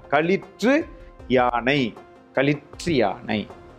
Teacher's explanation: யானை நிறுத்தாமல் ஒரே வீச்சு நாம் கூறுகின்ற பொழுது அது ரி என்று திரிகிறது குற்றியல் உகரம் குற்றியல் இகரமாக மாறி வருகிறதை நாம் அறியலாம்